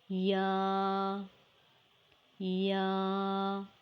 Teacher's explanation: Y is a light and soft sound letter pronounced by middle of the tongue and roof of the mouth